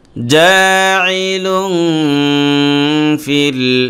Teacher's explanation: জিম আলিফ জবর জা আইন জের ই জাই লাম দুই পেশ লুং জাইলুং ফালাম জের ফিল লুং ফিল তানবিনের পরে ফা আসছে, এই ফাটা হলো ইখফার অক্ষর, অতএব এখানে ইখফা গুণনা হবে। তানবিনের উচ্চারণটাকে নাকের ভিতর নিয়ে গুণনা করে পড়তে হবে